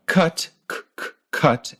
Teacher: in the word cut, your tongue comes up in the back to meet your soft palate, like this. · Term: K sound